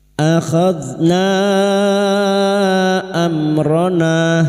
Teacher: Mad jaiz munfasil kita panjangkan empat atau lima harakat. Namun kita tentukan salah satu misalnya lima harakat. · Mim sukun bertemu ro idhar syafawi. Mim sukun dibaca jelas tanpa mendengung bertemunya mim sukun dengan huruf hijaiyah selain mim dan ba.